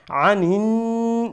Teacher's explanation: عين middle throat থেকে উচ্চারণ হবে